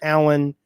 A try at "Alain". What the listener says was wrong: Yeah, it's Alain. It's ein, the end. It's a sound that doesn't exist in English. So it's Al ein. Alain.